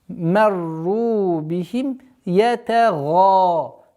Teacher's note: Марру бихим ятага. Твердое произношение га и долгота в размере двух огласовок фатха